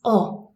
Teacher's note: it's a very round sound we really round the lips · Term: British short o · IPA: /ɒ/